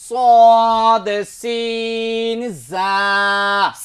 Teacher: 12 number মাখরাজে জিহ্বার আগা সামনের নিচের দুই দাঁতের আগার সঙ্গে লাগাইয়া